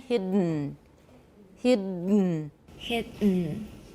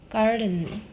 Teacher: nasals are syllabic at the end of the word when immediately after an obstruent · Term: nasal plosion